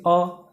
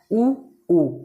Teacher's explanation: ऐसे स्वर जिनका उच्चारण करने में मुंह हमारे गोल हो जाता है ओठ हमारा क्या होता गोल आकार का हो जाता है वह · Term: वृत्ताकार